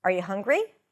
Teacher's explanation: There is rising intonation, where your pitch goes up.